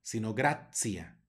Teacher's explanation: ya sabemos que se pronuncia la t como una ts